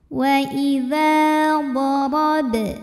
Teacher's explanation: huruf Dho dibunyikan secara tafkhim karena D berbaris fathah maka cara bacanya ditebalkan pangkal lidah kita angkat